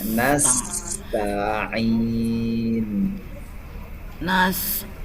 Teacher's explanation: Sifat sofirnya huruf sin tidak boleh hilang. Kalau nasta'in itu sofirnya tidak ada.